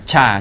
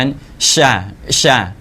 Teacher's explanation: ช่าอ่าจะเหมือนกับชช้างแต่ต้องพ่นลมออกมามาเยอะหน่อยนะครับ